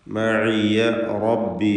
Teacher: റാഇന് തഫ്ഖീം കൊടുക്കുക, തടിപ്പിച്ച് ഉച്ചരിക്കുക